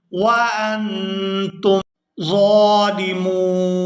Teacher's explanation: یہاں ظا کو کھڑی زبر کی وجہ سے کھینچ کر ادا کریں گے اور آخر سے نون کو وقف کی وجہ سے ساکن کر دیا جائے گا۔